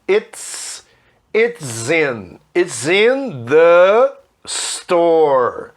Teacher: Olha que eu juntei o it's com in. E ao juntar esse S com in, ficou o som de Z, né?